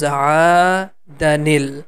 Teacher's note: So we are going to pronounce that aada, and this ni sound is going to connect with lam. It becomes aadanil.